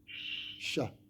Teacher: Tu es obligé d'avoir ce contact entre le milieu de la langue avec le milieu du palais. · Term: shin